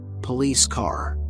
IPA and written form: pəˈliːs kɑːr (police car)